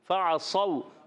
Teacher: صاد واو زبر صو، واو ساکن سے پہلے زبر، واو لین ہوگا، نرمی سے ادا کریں گے · عین کی ادائیگی حلق کے درمیان والے حصے سے